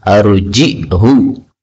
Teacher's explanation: arjih, boleh dibaca arji'hu, berarti ditambahi hamzah, dan haknya boleh panjang, arji'hu juga boleh.